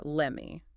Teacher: The T in let often disappears completely due to simplification, merging into a smooth lemme.